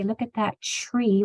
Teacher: when we talk lazily we will say look at that tree with a CH sound